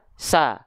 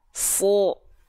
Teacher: Huruf shad ketika dia berharokat fathah dia nggak dibaca sa, tapi dia dibaca so. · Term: huruf tebal